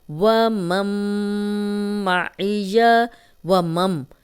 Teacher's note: وَمَن مَعِیَ، وَمَم، اب واو پہ ہون گول کریں گے اور یہاں پہ میم کی زبر میم سے ملے گی، تو یہاں غنہ کریں گے۔ میم پہ شد ہے، نون ساکن کے بعد بھی میم آ جائے تو غنہ ہے، اور میم پہ شد بھی ہے تو یہاں ہم غنہ کریں گے۔